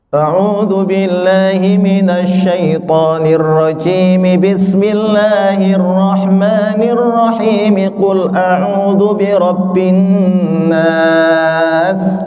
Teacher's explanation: waslul jam'i, seluruhnya disambung, yaitu ta'awud, basmalah dan surah ya, dibaca bersambung semua ya.